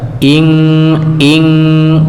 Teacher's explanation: hukum ikhfa yang setelahnya ada huruf kaf, maka itu dibaca dengan kuat, dengan ng ya. Kenapa? Karena makhrajnya jauh.